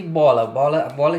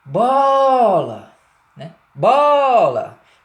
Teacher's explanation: perceba que o ó da primeira sílaba ó ele é um o que é pronunciado com mais força com mais intensidade demora mais e ele pega todo destaque todo glamour da palavra para si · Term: vogal tônica